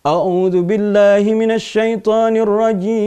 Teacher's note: Lagu jiharka ini nadanya rendah saja, pendek saja ya. Kalau kita baca, mendengarkan ada imam di Timur Tengah sana yang bacanya dengan lagu jiharka, rendah saja.